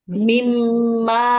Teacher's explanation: Nah, ada tasdid bu ditekan mimma.